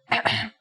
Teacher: the closest english counterpart to the sound is h the only difference is that it comes from a point deeper down in your throat